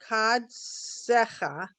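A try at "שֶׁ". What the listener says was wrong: No. This is a shin. Dot on the right. Shin. You have to remember that. Your shin is on the right. Your sin is on the left.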